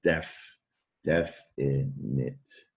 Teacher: indefinite the stress is on the first syllable